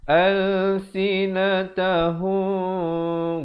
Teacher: Ikhfa itu disembunyikan bunyi mim itu di belakang ba. Kalau cara bacaannya macam kita baca hukum iqlab begitu. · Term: ikhfa syafawi